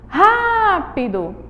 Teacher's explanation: elas apresentam aí o som de uma proparoxítona por quê Porque a gente tem o som aí da sílaba tônica essa sílaba é a antepenúltima